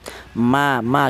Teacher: huruf mim ini bertempat di kedua bibir yang rapat